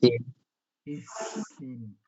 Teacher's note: জিব্বার আগা শুধু উপরে দুই দাঁতের আগার সাথে লাগাইতে হবে আর কারোর সাথে জিব্বার আগা লাগাবে না